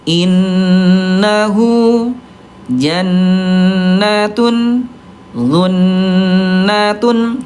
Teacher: Ini bunda kita ambil 2 ketukan lambat, dibaca sama semuanya. 2 ketukan lambat dan didengungkan ya.